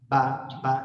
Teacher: با ہونٹوں کے اندرونی گیلے حصے کو آپس میں ملا کر ادا ہوتے ہیں